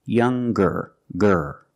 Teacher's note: When we change these adjectives with ER or with EST, we're going to pronounce the G sound, the hard G. So it's younger, ger, with a G sound.